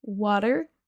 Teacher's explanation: je le prononce à l'américaine, le T se transforme en D, water, mais vous pouvez prononcer water.